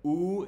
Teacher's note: it's a high back rounded vowel